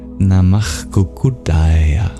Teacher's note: the visarga before a voiceless consonant becomes the sacred jihvamulyaḥ